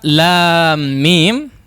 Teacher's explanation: Ini namanya idgham ya, atau idgham mimi mungkin sebutkan, idgham shaghir. Mim sukun bertemu dengan mim, maka di situ ada gunnah yang dipanjangkan